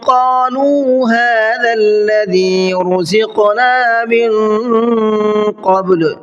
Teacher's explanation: قالوا کے اندر بڑا قاف ہے اور لام کو کھینچ کر کے پڑھنا ہے